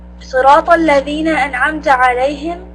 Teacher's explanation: make sure that you have Sad and Ta full mouth